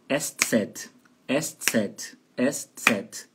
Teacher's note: E a tônica fica no segundo E.